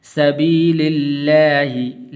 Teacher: لفظ اللہ کو پر نہیں کرنا بلکہ باریک کر کے پڑھنا ہے